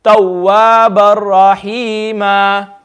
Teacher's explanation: No gunna, okay? And I'm skipping the do zabar as if it's not even there.